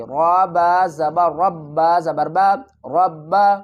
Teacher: پیش سو، با پیش بو، سعبو، دال واو پیش دو، سعبدو۔ را کو پر پڑھیں گے اور را کو با سے ملائیں گے